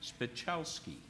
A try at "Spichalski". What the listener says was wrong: Yeah. C silent. Actually.